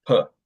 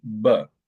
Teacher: this is a minimal pair they're both bilabial